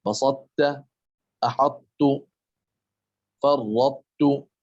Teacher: ويلاحظ هنا عدم وجود شدة على حرف التاء، لأن الإدغام من قبيل الإدغام الناقص